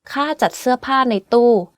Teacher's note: Every word on this sentence is in falling tone, except จัด which is in low tone, and ใน which is in middle tone.